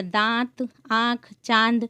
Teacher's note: जब मुख और नाक दोनों से हवा निकले, लेकिन नाक से बहुत कम और मुंह से अधिक सांस निकलती है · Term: अनुनासिक